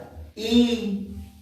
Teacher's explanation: jangan matiin tapi i tuh seakan-akan masih nyala suaranya masih nafasnya masih ada